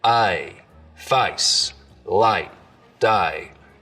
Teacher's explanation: So the diphthong in face starts real low, down around ah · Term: face lowering